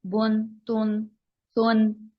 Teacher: نون کی sound اینڈ میں آ رہی ہے لیکن یہاں پر لکھا ہوا نہیں ہے